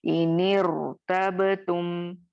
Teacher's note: यहाँ पे रॉ साकिन को हम मोटा पढ़ेंगे